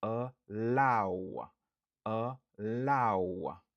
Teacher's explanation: Stress syllable lan li sou deuxième syllabe lan.